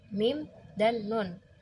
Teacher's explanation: nasal, di mana aliran udara keluar melalui rongga hidung. Hurufnya itu ada 2, mim dan nun.